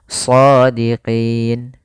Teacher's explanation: Kemudian sebelum huruf nun ada huruf ya. Nah, maka pada lafal qi itu kita boleh memanjangkan 2 harokat atau 4 harokat atau 6 harokat. Shadiqin 2 harokat, shadiqin. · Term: mad arid disukun